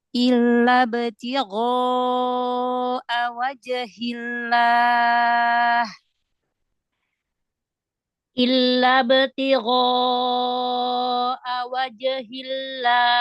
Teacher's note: Ya, alif mengikuti huruf sebelumnya. Huruf ghain, huruf isti'la, huruf tebal. Maka tebalkan juga alifnya.